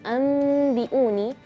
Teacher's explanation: menukar bunyi nun sukun atau tanwin dengan bunyi mim, dengan catatan bunyi mim disamarkan menuju huruf ba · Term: huruf iqlab